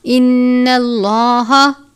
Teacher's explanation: نون مشدد پر غنہ کرتے ہیں، غنہ کی مقدار 1 الف کے برابر ہے